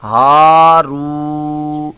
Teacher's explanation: را واو پیش رو، یہ واو مدہ ہے اور اس کو بھی ایک الف دو حرکات کے برابر کھینچ کر لمبا کر کے دراز کر کے پڑھیں گے